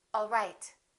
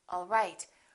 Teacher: One is falling intonation, and one is rising intonation.